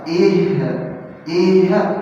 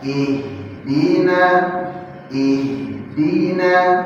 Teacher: Lepas di sukun H-nya. Jangan tertahan. Kalau tertahan jadi qqalah.